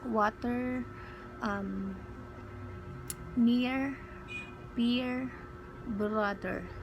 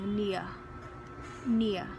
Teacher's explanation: Tinatanggal ko yung letter R in order for me to sound or to get the British accent.